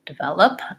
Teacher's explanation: stresses on the middle syllable